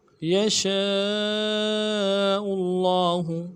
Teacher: لام کے اوپر کھڑا زبر ہے، تشدید ہے، تشدید کو زور دیں گے، کھڑا زبر کو ایک مقدار میں کھینچیں گے ، اور اگلے ہا کو نرم سے پڑھیں گے، یشاء اللہ